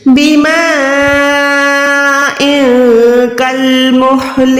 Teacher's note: اب یہاں پر لام ساکن ہے تو آپ نے لام ساکن کو کاف زبر کے ساتھ ملا کے کل پڑھنا ہے، نہ کہ کال. ٹھیک ہے، یہ کال نہیں بلکہ کل ہے.